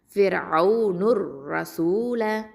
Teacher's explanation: அடுத்தது ரா ஃபதா ரா ஹெவியாக உச்சரிக்கணும்